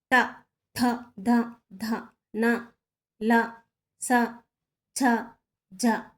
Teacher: దంత్యములు దంతాల నుంచి పుట్టినవి. ట, థ, ధ, ధ, న, ల, స, ఛ, జ అనేవి దంత్యములు.